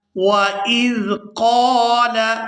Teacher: یہاں قاف کے ساتھ الف مدہ ہے تو اس کو کھینچ کر ادا کریں گے